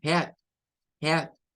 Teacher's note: No es head, no es head, es head, head, con el diptongo EA. Entonces, el diptongo EA en muchas palabras se comporta de manera que allí lo que suena es una E · La A no suena en ese sentido, eso no suena, pero lo debemos de ver como un diptongo, o sea, como la E y la A en el inglés tiene un sonido corto que es el sonido E, que es igual el mismo sonido, digamos, que se tiene en el español